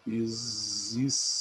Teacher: aquele X não tem som de S, aquele X tem som de Z